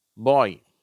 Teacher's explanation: ஆல் ஆரம்பிச்சு ஈல முடியுது ஆய் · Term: டிப்தங்